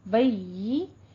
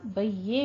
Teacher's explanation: बय्यी या के नीचे कसरा है, मुंह को पस्त करके बारीक आवाज, बय्ये नहीं कहना है, बय्यिनतु वक्फ कर देंगे इसके ऊपर।